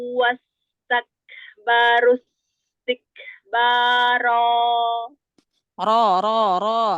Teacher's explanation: tebalkan angkat pangkal lidah walaupun ro huruf tipis tetapi ada beberapa keadaan yang ro dibaca tafhim dibaca tebal